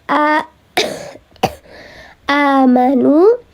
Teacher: ini panjang dua harakat ada hamzah harakatnya fathah berdiri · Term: mad badal